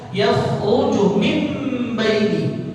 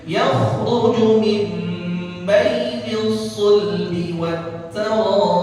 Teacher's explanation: Nun ketemu ba. Jadi iqlab.